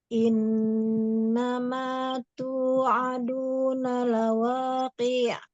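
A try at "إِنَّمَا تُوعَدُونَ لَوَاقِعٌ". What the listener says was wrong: Lawa, monyong lagi wawu.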